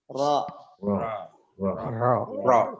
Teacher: ro tidak monyong karena dia bukan huruf bibir tapi dia huruf lisan · Ro diucapkan agak miring lidahnya jadi meletakkan yang di bagian tepinya bukan di ujungnya bukan ro tapi ro biasanya dimiringkan sedikit di bisa yang kiri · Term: huruf ro